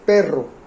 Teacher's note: Perro tiene una vibración múltiple.